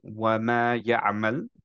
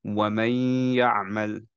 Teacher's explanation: ওকে, মাইটাতে ধরে রাখতে হবে, ওয়ামাই ইয়া আমাল। মাইটা ধরে রাখলাম বিকজ হচ্ছে ইটস গুন্না